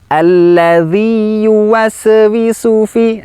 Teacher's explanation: Memantulkan bacaan huruf sin, padahal huruf sin tidak termasuk dalam huruf qalqalah. Istilahnya adalah tawalud.